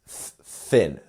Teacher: So with thin, make sure you get that little sound here, which is putting your tongue to your top teeth and you're blowing air lightly through your teeth